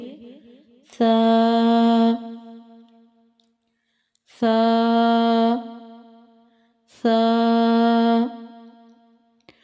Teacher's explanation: سا نرم حروف میں سے ہے، اسے نرمے سے ادا کریں گے، سیٹی کی آواز نہیں آنی چاہیے۔